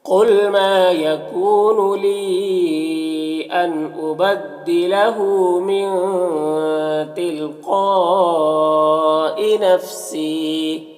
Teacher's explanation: نفسی یہاں پر یا مدہ ہے، ایک الف کے برابر کھینچیں گے · ان یہاں پر نون میں اظہار حقیقی ہوگا، اسے جلد پڑھنا ہے